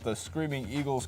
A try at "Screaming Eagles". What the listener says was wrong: It's just Screaming Eagles. It's not the Screaming Eagles.